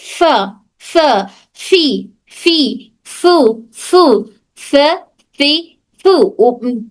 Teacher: ऊपर के दांत नीचे के होंठ की तरी को, सिर्फ मखरज सीख रहे हैं हम। ऊपर के दांत नीचे की होंठ की तरी को टच हो रहा। · ऊपर के 2 दांत और नीचे का होंठ हमारे फा का मखरज है।